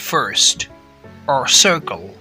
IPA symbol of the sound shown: ɝ